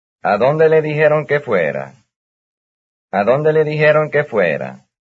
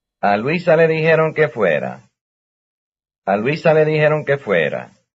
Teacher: A question with a question word then is no different in intonation from a statement.